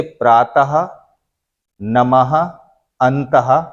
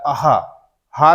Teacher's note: हा के रूप में हा ध्वनि निकलती है विसर्ग का उच्चारण करते समय